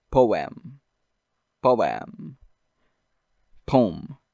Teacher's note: The first syllable ends in a vowel, and then the second syllable starts with a vowel.